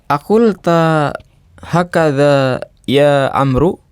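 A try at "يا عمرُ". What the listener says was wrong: Ya, kalau Amru ada wawu di belakang ro. Ya Umaru. Ini Umar. Kalau nggak ada wawu berarti Umar. Aqul tahakadha ya Umaru. Aqul tahakadha ya Umaru.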